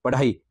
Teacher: जिसके उच्चारण में जिह्वा की नोक झटके से नीचे गिरती है तो वह उत्क्षिप्त यानी फेंका हुआ उत्क्षिप्त ध्वनि कहलाती है।